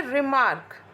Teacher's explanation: unstressed syllable होगा और उसके बाद स्ट्रेस्ड सिलेबल